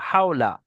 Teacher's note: ওয়াও লিনকে নরম আওয়াজে তাড়াতাড়ি পড়তে হয়, টান দেওয়া নিষেধ।